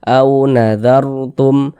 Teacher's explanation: huruf waw sukun sebelumnya harokat fathah. Huruf lin kita baca lunak.